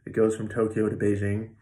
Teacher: the from and the to get so small you almost don't hear a vowel at all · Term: reduced vowel